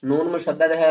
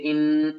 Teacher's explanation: نون مشدد ہے، غنہ کریں گے، حمزہ کو نون سے ملائیں گے، حمزہ نون زیر ان، اور جو آواز ہے وہ ناک سے آئے گی، یعنی ناک کے جو بان سے ہے نا، یہاں سے آواز آئے گی۔